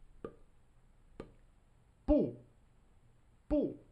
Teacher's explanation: There's actually sound that comes out, b. But in Chinese, it's just the initial B sound, but with no voicing.